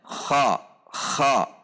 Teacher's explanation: Kemudian al-infitah, posisi lidah dengan langit-langit atas terbuka. Jadi yang menaik ke atas adalah pangkal lidah saja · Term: al-isti'la